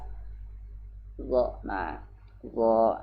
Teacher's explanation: Nah, kalau Dha ini diperhatikan, Dha ini adalah huruf lisan, ujung lisan atau lidah dengan gigi, dengan ujung gigi yang di atas. · Dan dia jahar tanpa mengeluarkan udara.